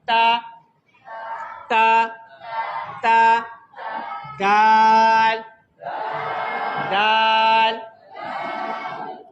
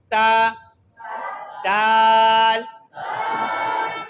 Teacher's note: तो मैं अर्ज कर रहा था कि जो जबान की नोक है वहां दांतों की कहाँ लगे, जड़ से, जड़ से अदा होता, ता, ता, ता, दाल, दाल, ओ, जबान की नोक वहां से जो ऊपर वाले दांत हैं वहां की जड़ से बिल्कुल टच हो